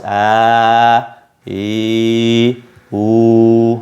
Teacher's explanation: Jadi yang pertama makhraj jauf, ya, dia keluar dari kerongkongan, lost, tidak ada stop dimanapun, lost, a, i, u, ya, fungsinya memanjangkan bacaan.